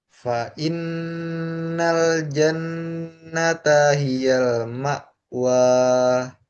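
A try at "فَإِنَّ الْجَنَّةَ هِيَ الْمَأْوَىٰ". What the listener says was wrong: Sebentar ma wa dua harakat aja jangan kepanjangan.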